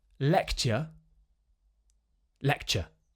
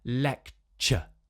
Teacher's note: the thing that's going to make it sound extra British is if you're able in most of these words to get that lovely schwa sound at the end